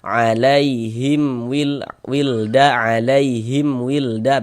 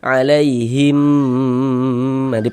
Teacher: Maka dibaca jelas tak berdengung pendek saja. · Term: izhar syafawi